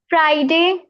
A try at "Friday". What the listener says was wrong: Fry. Fry नहीं बोलना. Fry. Okay. Friday. There is a small difference, but it makes a big difference.